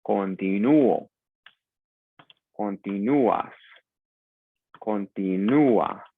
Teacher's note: Because the stress would naturally be on the I, but it is pronounced continuo. Now, U and O is a diphthong. It is one syllable in Spanish, so we have to break that syllable up. And the way we do it is by putting an accent on the U.